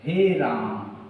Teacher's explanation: आ का उच्चारण बहुत देर तक किया तो ये प्लुत हो गया